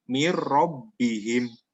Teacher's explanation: Jadi hampir nunnya ini hampir hilang karena idgham bilahuna itu meleburkan ke huruf setelah huruf yang ditemui oleh nun sukun atau tanwin, ya, tanpa dengung. Bukan mirrobbihim, bukan, itu ada dengungnya, tapi membacanya mirrobbihim, ya, jelas tanpa dengung. Nah, itu contoh dari idgham bilahuna.